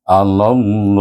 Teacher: lam jalalah itu dibaca dengan tebal